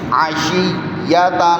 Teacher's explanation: ٹھیک ہے، دیکھیں شین یا زیر شی، عشی، یا زبر یا، عشیہ، عشیہ، تا دو زبر تن، عین گلے سے، عین کی آواز حلق سے، گردن سے زور لگا کے